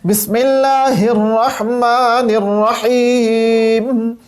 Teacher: اللہ کا جو ہا ہے یہ ہمارے پاس اقصی حلق سے ادا ہو رہا ہے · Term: وسط حلق